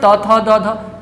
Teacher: इन सभी का उच्चारण किससे होगा? दंत से होगा, और इसीलिए इसे दंतय भी कहा जाता है।